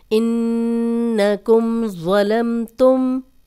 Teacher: नून पे शद है इसलिए हम गुन्ना कर रहे हैं, लेकिन जज़म वाली मीम और आगे ज़ो है, हम गुन्ना नहीं करे